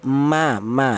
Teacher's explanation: huruf mem dan ba itu dihasilkan dari kedua bibir yang rapat. Ya, bibir kita rapat dulu.